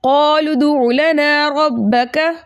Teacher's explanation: अलिफ मद्दा को दो हरकत की मिकदार खींच कर पढ़ते हैं।